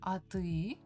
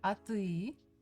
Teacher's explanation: when it's question, we raise the voice